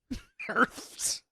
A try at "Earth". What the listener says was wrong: Like somehow you hit a TH and an F all at once.